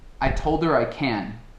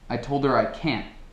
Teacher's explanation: can é um pouco mais longo e can't é um pouco mais curto